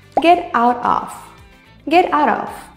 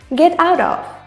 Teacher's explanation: In both get and out, T sounds more like a D. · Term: linking